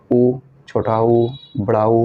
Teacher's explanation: ओष्ठ का जब हम प्रयोग करते हैं, देखिए हम छोटा ऊ बड़ा ऊ बोल रहे हैं ना, तुम्हारे ओठ थोड़ा वृत्ताकार हो रहा, गोलाकार के तरीके से बना हमारा ओठ।